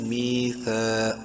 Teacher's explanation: زبان کی نوک سامنے والے دانتوں کے بیچ میں لگا کر پڑھنا ہے